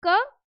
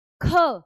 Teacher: अब क का जब उच्चारण करते हैं तो वह अल्पप्राण है। पर जब ख का उच्चारण करते हैं तो वह महाप्राण है। उसमें वायु है जो वो ज्यादा मात्रा में बाहर निकल रही है।